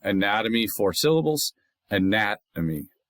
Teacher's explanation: anatomy, 4 syllables, anatomy, accent on the 2nd of 4.